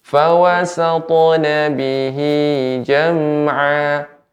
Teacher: Sekali lagi mengulang huruf qalqalah. Ta ini juga huruf isti'la sehingga pengucapannya juga tebal.